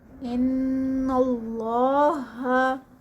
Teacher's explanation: ان، یہاں پر ان پہ غنہ ہے، یہاں پر غنہ ہوگا۔ ان اللہ، اللہ کے نام سے پہلے زبر ہے تو ہم یہاں پر اللہ کا نام جو ہے وہ ہیوی ہوگا۔ اللہ کا نام ہیوی۔